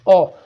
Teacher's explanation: अगर आप ओ का उच्चारण करेंगे दोस्तों तो आपकी जो जीवा है, मध्य भाग जीवा का, वो आपका हल्का सा ऊपर की ओर उठेगा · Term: मध्य स्वर